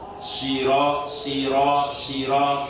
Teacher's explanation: Walaupun berharokat kasroh tetap tebal. Siro, siro, siro dengan cara pangkal lidah itu diangkat ke atas.